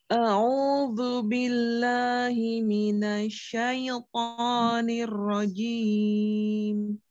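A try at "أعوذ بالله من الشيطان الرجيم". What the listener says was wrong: Ya, tipiskan lagi lamnya, Om. Billahi.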